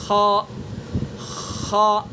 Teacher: خا کو حلق کے منہ کی طرف والے حصے سے ادا کریں گے